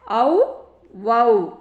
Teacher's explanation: இந்த ஔகார எழுத்து தனித்து வரும் இடங்களில் தனக்குரிய 2 மாத்திரை அளவில் முழுமையாக ஒலிக்கிறது. இதுவே சொல்லுக்கு முதலில் வரும்போது தன்னுடைய மாத்திரை அளவில் குறைந்து ஒலிக்கும்.